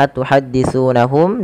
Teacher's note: ditahan suara mimnya karena dia ikhfa syafawi